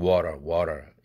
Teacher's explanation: 트를 자음 중 가장 울림도가 높은 유성음인 설탄음, R 사운드, 설탄음이 5도까지죠.